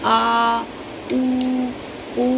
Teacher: जीभ के पिछले भाग से आ उ ये सब निकलता है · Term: पश्च स्वर